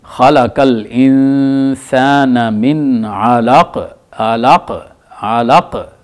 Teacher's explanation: کاف ایسے لگتا ہے کہ شاید ڈبل ہے، ڈبل نہیں ہے وہ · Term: قلقلہ